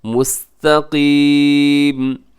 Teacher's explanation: आखिर में जो काफ है उसे आप मोटा रखिएगा, उसे बारीक ना कीजिएगा।